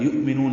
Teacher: حمزہ ساکن جھٹکے سے، نو واو مدہ ادا، فی یا مدہ ہے اور اس کے بعد حمزہ آنے کی وجہ سے مد منفصل.